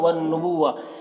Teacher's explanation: वल हुक्म वन नबुव्वा यहाँ पर नून मुशद्दद गुन्ना के साथ पढ़ेंगे